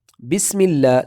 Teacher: سین میں ہم نے سیٹی کی آواز نکالنا ہے، بس اس طرح نہ ہو جائے زبان کا سرا سامنے والی دانتوں سے نہ لگ جائے، دونوں دانتوں کے درمیان ہم نے رکھنی، زبان کے نیچے والے بس سیٹی کی طرح تیز آواز نکالنی ہے۔